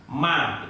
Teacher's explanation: Itu mim. Berarti ketika membaca mim yang idhar itu mesti ada unsur dengungnya, walaupun itu satu ketukan. Ma tetap ada dengungnya.